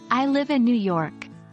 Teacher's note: For example, in the sentence, I live in New York, the voice falls on York. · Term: falling intonation, Falling intonation